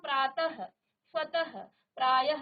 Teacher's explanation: विसर्ग है ना इसे आधा ह की तरह आप उच्चारित करते हैं